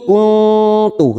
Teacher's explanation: Ya laitani kasrah bertemu ya sukun 2 harokat. Ni kuntu nun sukun bertemu ta ikhfa hakiki kita samarkan 3 ketuk atau 3 harokat bunyi nun sukun. Kuntu roba masing-masing 2 harokat kita panjangkan.